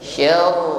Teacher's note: Kembali ditutup dengan huruf ra. Getarkan ujung lidah dengan getaran yang tebal.